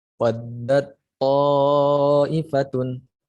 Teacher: Awalnya seperti tak, tapi tengah itu berubah jadi tok.